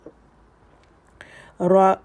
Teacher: اخفا، نون ساکن کے بعد شین